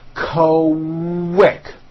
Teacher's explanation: the word quick is pronounced with a K and a strong W sound. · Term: Q sounds